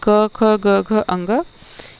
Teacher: क, ख, ग, घ, अंग, ये कंठ से बोला जाता है। ठीक है, इसलिए इसे कंठ व्यंजन बोलते हैं।